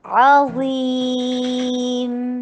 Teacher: زا کو ہیوی کیجیے اور میم کے اوپر توسط کا ٹائم دیجیے